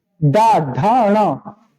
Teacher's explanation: डा ढा णा हमेशा पीछे टकरा के आएगी, तालु से भी पीछे वाले भाग से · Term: मूर्धा